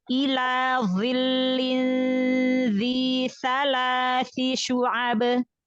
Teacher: dha walaupun kasroh dia punya tingkatan isti'la. Karena huruf isti'la kan. Dha juga terkepung, itbaq. · Dha ditebalkan lagi, angkat pangkal lidah.